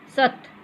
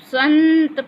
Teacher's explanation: अब संत पढ़ेंगे तो देखिए नाक से निकलता है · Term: अनुस्वार